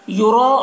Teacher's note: را کو پر پڑھنا ہے اور جو مد ہے مد متصل ہے، اسے 3-4 الف کے برابر کھینچتے ہیں۔ او میں واو مدہ ہے، اسے ایک الف کے برابر کھینچیں گے۔